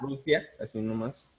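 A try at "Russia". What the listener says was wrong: sí, nada más recuerda alargar un poquito más el sonido. Rusia, ¿sí?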